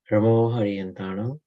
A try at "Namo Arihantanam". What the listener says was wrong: Ana, not ra, ana. Namo, like pani. Pani. Namo Arihantanam.